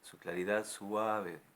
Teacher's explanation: Le puso diéresis a suave, lo puso en un lugar del verso donde para que den las 11 sílabas hay que hacer un pequeño hiato entre la U y la A